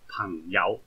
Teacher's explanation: 系个鼻音系好重，即系收声嘅时候咧，个鼻音系好重噶